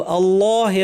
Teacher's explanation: আল্লাহ লামটা মোটা করতে হবে এই হুতে কিন্তু টান নাই আজলল্লাহু টান ছাড়া থামা আমাদেরকে প্র্যাকটিস করতে হবে।